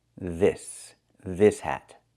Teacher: the s is a true s. No voice.